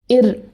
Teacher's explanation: ஒரு வாட்டி தட்டி தடவி சின்ன அதிர்வோட காற்று நாக்கு நடுவில் வெளியேறும். இது வருடொலி.